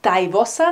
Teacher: In “dei Wossa” we see again that the “n” has been deleted.